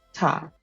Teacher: And I'm about to pronounce Ta, first tone. So a constant tone.